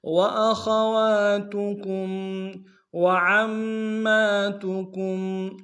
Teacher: عین کو گہرائی سے ادا کریں گے، میم کے اوپر تشدید زور دیں گے، اور میم کے اوپر اگلے میم کے اوپر کھڑا زبر بھی ایک امتحان میں کھینچیں گے۔